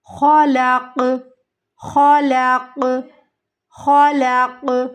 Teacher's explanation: قاف ساکن ہو جائے گا، قطب جد میں سے، تو ہمیں یہاں پر قلقلہ کرنا ہے۔